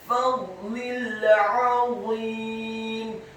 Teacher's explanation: huruf a-nya ditekankan, keluar dari tenggorokan bagian tengah fathah 1 harokat.